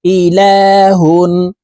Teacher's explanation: পড়তে হবে ইলা হা দুই পেশ হুন তানভীন ওয়ালা হার পরে ইজহারের হরফ গাইন আসছে এই কারণে এই হাকে গুন্না ছাড়া স্পষ্ট করিয়া পড়বো